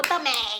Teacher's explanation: esse EM vira EIM